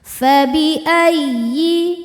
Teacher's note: ya tasydid cukup dibaca dengan naber, naikkan intonasi suara kita tanpa menahannya ya, kalau sebelumnya tidak ada tanwin atau nun sukun.